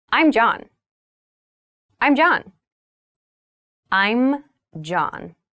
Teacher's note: i'm is the reduced form of i and am becomes i'm make sure to clearly pronounce that m sound